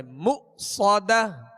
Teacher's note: صاد کو سیٹی کی آواز میں اور پر پڑھیں گے